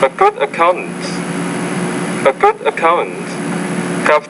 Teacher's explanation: You have tone, a little bit of rising tone at the end of the first thought group.